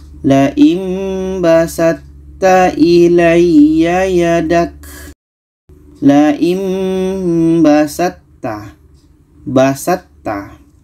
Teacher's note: Untuk makhrajnya sama-sama ujung lidah bertemu dengan pangkal gigi seri atas.